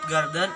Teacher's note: the syllable ga must be produced longer than syllable den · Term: stress